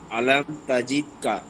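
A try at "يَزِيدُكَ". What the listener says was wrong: ইয়াজিদেকা, তাজিদ কেন, ইয়াজিদেকা।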